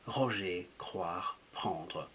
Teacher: You're letting a flow of air, and you can gently tap at the top of your palate with the back of your tongue. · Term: R in a French way